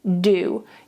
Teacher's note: Make sure that you are not touching your teeth. The duh sound in English is not a dental sound.